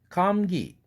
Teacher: 강동구 감기 그 사운드 소성으로 나온 것은 무성음이지만 기 할 때 그 사운드는 아주 연한 유성동화 현상을 일으킨 겁니다.